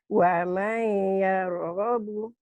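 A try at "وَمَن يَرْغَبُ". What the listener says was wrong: Annya jadi am. Ini idgham.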